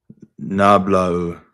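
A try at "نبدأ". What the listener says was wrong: Nabda'u. This is a dal. It's a little big, but it's a dal.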